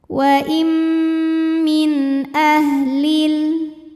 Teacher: nun sukun menghadapi huruf halq atau huruf tenggorokan yaitu Hamzah maka nun sukun dibaca jelas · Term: izhar halqi